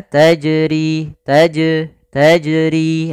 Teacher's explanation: Maka bagaimana yang benar adalah dia tidak menambahkan hamzah dan juga dia dipantulkan